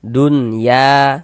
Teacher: Jangan didengungkan, dibaca pendek saja.